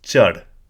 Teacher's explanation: Again, you might not necessarily pick it straight away, but there's a slight increase in tone, and chad means to climb. So a slight increase in tone or a slight H, sort of extra breath at the end or during the word chad